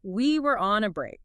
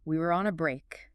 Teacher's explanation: If you listen to that clip, which the source encourages you to do, you hear heavily stresses we and especially break. There's a specific frustrated tone, a really dramatic intonation contour, maybe a big rise on break followed by a sharp fall.